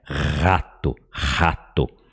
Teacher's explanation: Parece com o nosso R de rato, mas esse nosso R, ele raspa